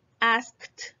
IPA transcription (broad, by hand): ɑːskt